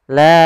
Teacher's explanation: Panjangnya adalah empat harakat atau lima harakat. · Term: mad wajib muttasil